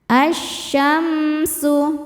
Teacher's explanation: Sebab alif lam menghadapi huruf syamsiyah yaitu shin. Cara bacanya lam tidak dibaca, masukkan. Asyamsu. Kemudian mimnya dihukumi izhar syafawi. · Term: alif lam syamsiyah